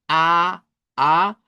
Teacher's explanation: En el caso de la a del español, note que es una vocal abierta porque debemos de abrir nuestra mandíbula. De hecho, es de las más abiertas.